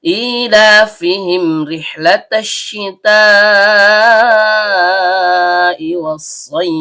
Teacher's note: Ada hamzah berbentuk alif atau hamzah kotok keluar dari tenggorokan bagian bawah. Karena hamzahnya berharokat kasroh berdiri atau kasroh panjang, maka terjadi hukum bacaan mad badal.